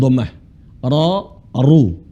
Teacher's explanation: ra dibaca tebal karena dia ber harakat fathah dan dah ro ru tapi kalau harakat kasrah dibaca tipis atau